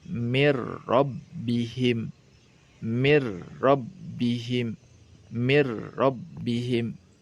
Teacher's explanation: Bukan min ro, tetapi dileburkan secara sempurna. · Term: idgham kamil